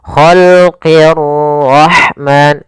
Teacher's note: ra di sini ra tafkhim, ra-nya harus dibaca dengan tebal. Ra tafkhim, ra tebal.